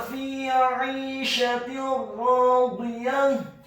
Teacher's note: huruf fa-nya dibaca kasrah 2 harokat karena setelahnya ada huruf ya sukun